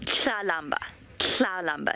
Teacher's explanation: there's not really a T sound. It's there, but it's very underemphasized.